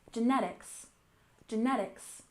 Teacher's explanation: genetics we stress the second syllable